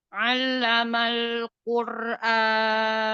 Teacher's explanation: Coba perhatikan lamnya tipis, ro-nya yang tebal ya.